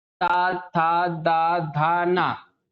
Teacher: जब हम ता परिवार के सदस्यों का उच्चारण करते हैं तो आपकी जीभ जो है दातों को टच करती है